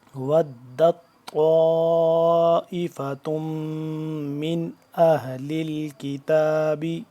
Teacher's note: طا کا موٹا اور لمبا کیا ہم نے، الف آگے کو مد ہے، اور آگے تا میم پیش تم، میم مشدد اس پہ غنہ کریں گے.